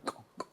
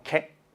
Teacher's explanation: la K está en el mismo sitio, pero para adelante